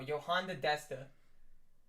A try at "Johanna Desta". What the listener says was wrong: Where'd you throw the D in there? Yeah, you said Johanna.